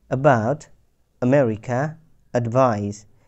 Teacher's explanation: এখানে আ হচ্ছে সংক্ষিপ্ত এবং গলা থেকে উচ্চারণ করেছি কোনো প্রকার স্ট্রেস ছাড়া। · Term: শর্ট আ